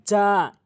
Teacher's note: ইজা ইজা, জিম আলিফ জবর যা, এখানে জিমটি উচ্চারণ করতে হবে শক্ত করে, জিব্বার মাঝখান উপরে তালুর সঙ্গে